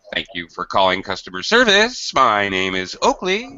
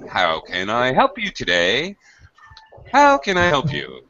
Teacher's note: it's a very exaggerated it's called drop rise intonation because the it's not very smooth transition from high and low pitch it's very fast uh transition or change from a high and low pitch